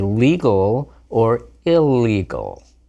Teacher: There aren't even two different sounds anymore, just an L sound.